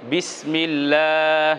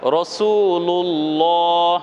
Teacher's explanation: জের দিয়ে পড়লাম কি বিসমিল্লাহ এরকম বিসমিল্লাহ আলহামদুলিল্লাহ এরকম পাতলা হবে আল্লাহ শব্দের পূর্বে জের পাতলা আল্লাহ শব্দের পূর্বে জবর পেশ মোটা